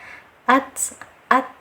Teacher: ta ini masuk ke sifat syiddah, artinya tertahannya suara, ditahan dulu. Nah, kemudian ta ini masuk ke dalam huruf hamas, adanya aliran nafas.